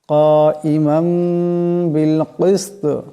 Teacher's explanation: দুই জবরের তনবিনকে মিম দিয়ে বদলায় পড়তে হবে, এটাকে কলব বলা হয়।